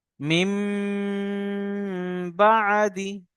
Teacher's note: নুন সাকিনের পরে যদি বা আসে, তো নুন সাকিনকে মিম দ্বারা পরিবর্তন করে পড়তে হবে। দেখতে পাচ্ছেন এই ছোট একটা মিম, অর্থাৎ এই নুন সাকিনটা মিম দ্বারা পরিবর্তন হয়ে গিয়েছে। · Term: ইকলাব